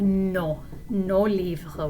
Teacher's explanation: For the plural form, we have nos livres with a silent S.